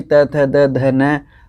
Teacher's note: इनका उच्चारण स्थान रहेगा अपने दंत से